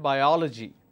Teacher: in this case I will stress on oh and I'll pronounce that biology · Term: syllable stress